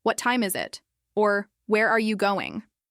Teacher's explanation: notice the way your voice naturally drops at the end. That falling tone signals that you're asking for specific information, not just a yes or no. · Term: falling intonation